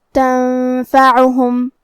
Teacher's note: حرف العین کی ادائیگی حلق کے درمیان والے حصے سے ہے